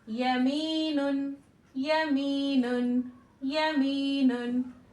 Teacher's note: जबान तालु की तरफ चिपकेगी नहीं, ठीक है, थोड़ा उसके करीब रहेगी लेकिन चिपकेगी नहीं बिल्कुल। वसत ज़बान जब यहाँ पर तालु के करीब रहेगी, ठीक है।